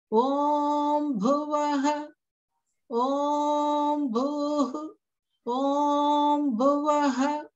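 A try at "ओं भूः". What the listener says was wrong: So the Bhuhu, because it's a dirgha, the Hu will be just a little bit longer, like Om Bhuhu.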